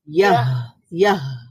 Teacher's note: হায়ের যে মাখরাজটা আছে একেবারে হলকের শুরুর দিকে আওয়াজটা জারি রাখতে হবে।